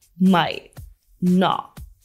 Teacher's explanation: RM uses connected speech here. Notice that the T at the end of might and not is pronounced with a stop T sound.